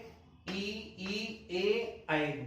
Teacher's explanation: जिन स्वरों को उच्चारण करने में जीवा का अग्र भाग सक्रिय होता है, उन्हें अग्रस्वर कहते हैं